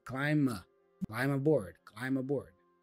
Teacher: be for climb is actually silent we don't say climb so he pronounced the M as the last sound and then you can join that M with the a for aboard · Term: connected speech